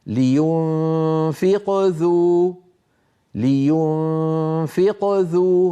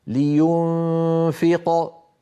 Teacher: الآن هذه الأمثلة التي أمامنا هي لحروف قلقلة آخر الكلمة ولكنها وسط الكلام، فقلقلتها صغرى إن وصلنا وكبرى إن وقفنا، هكذا. لينفق ذو، لينفق ذو، هنا القلقلة صغرى، ولو وقفت فقلت لينفق صارت القلقلة كبرى